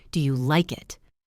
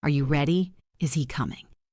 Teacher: When we ask a question that requires a yes or no answer, our voice usually goes up at the end. This is rising intonation. It sounds like you are lifting the sentence up into the air.